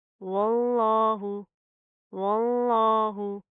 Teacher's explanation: तो लफ्ज़ अल्लाह को मोटा पढ़ा जाएगा, पतला नहीं पढ़ना। ये अलिफ लाम स्किप होएंगे।